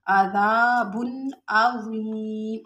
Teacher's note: अज़ीम में या साकिन उससे पहले ज़ेर है, या मद्दा है, तो इसको हम थोड़ा सा खींच के पढ़ेंगे। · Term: अलिफ मद्दा